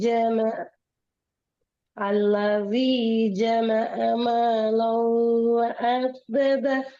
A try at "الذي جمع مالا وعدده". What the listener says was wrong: வ அ வரக்கூடாது. வ அ வளையணும். வ அ த த. வ அ அல்ல வ அ.